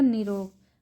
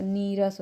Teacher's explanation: यदि विसर्ग के बाद र हो तो विसर्ग का लोप हो जाता है और उसमें पहले का स्वर दीर्घ हो जाता है